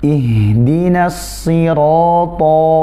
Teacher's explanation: Ihdinas sirata nasi, jangan sampai nasi, nunnya tipiskan, shadnya juga baru kemudian shadnya ditebalkan dengan tidak berlebihan